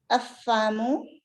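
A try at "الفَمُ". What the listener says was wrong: Not afamu. We will read lam here because lam has sukoon. Alfamu.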